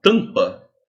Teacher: na realidade é um a nasalizado é o som de um de um fonema só · Esse som de duas letras, A e M, é representado da seguinte maneira: é um A com tio. Na realidade é um A nasalizado, é o som de um fonema só. É um A com som nasal.